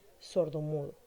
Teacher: la mayor fuerza de voz se conserva en la segunda palabra de ambos componentes. La fuerza de voz quedaría solo en la segunda palabra, de tal manera que tenemos la palabra sordomudo. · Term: sílaba tónica